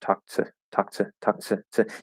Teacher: and we kind of just spit it out after that k it could kind of become a little slurred or blended and it comes out a little bit more like a ch sound